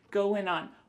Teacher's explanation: we're going to drop that G at the end of the word going